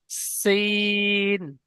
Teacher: প্রথম অক্ষরটি সিন হবে, সিটি মারার মতন আওয়াজ হবে, পাতলা আওয়াজ হবে